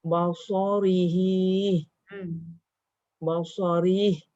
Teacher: Yang panjang tu hi. Kalau sambung hi 2 tapi bila berhenti ri tu pendek.